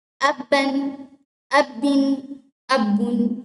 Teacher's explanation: ہم اس کے اوپر غنہ نہیں کر رہے کیونکہ اس کے بعد والا جو حرف ہے وہ حمزہ ہے اور وہ حروف ہلکی میں سے ہے.